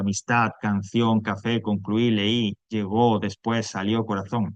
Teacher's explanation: Ese golpe de voz fuerte, esa sílaba tónica está al final.